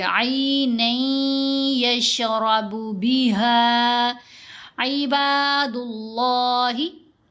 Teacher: لفظ اللہ کی لام کو ہم نے موٹا پڑھنا ہے